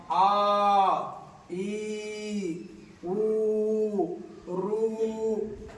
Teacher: ज्याचा उच्चार 2 मात्र्यात होतो त्याला दीर्घ स्वर म्हणतात.